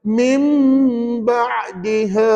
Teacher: Yang penting hukumnya adalah iklab dan dibaca dengan dengung.